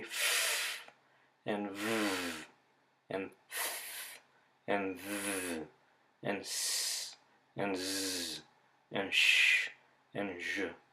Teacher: The air is not completely stopped, so it's turbulent and noisy as it comes out. The blockage isn't complete. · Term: fricatives